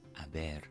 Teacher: Notice I trilled the R a little bit, and I didn't pronounce the H.